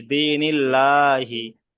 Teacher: আল্লাহর শব্দের পূর্বে জের এসেছে, তাই আল্লাহর শব্দটাকে বারিক করে পড়তে হবে, অর্থাৎ লা করে পড়তে হবে। সেই জন্য এখানে লা করে পড়ছি, দিনিল্লাহি।